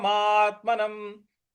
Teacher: न के ऊपर जो अनुस्वार है उसका उच्चारण हम म में करेंगे म के उच्चारण में करेंगे तो ये पद बन रहा है · मा के बाद जो आधा त है उस पर हमको आघात देना है बल लगाना है